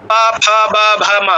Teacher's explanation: প্রত্যেকটাই ঠোঁট লেগে লেগে স্পর্শ করে করে খুলছে। পা, ঠোঁট লেগে খুলছে, ফা, স্পর্শ করে খুলছে, বা, ভা, মা, প্রত্যেকটাতেই ঠোঁট স্পর্শ করে আপনার খুললো, মানে এখানে পুরোটাই ঠোঁটের কাজ। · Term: ওষ্ঠবর্ণ